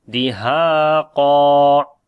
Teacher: Ha we long due to alif madda. Qaf and alif we read in heavy sound, and when we stop, so it one fatha only we read here.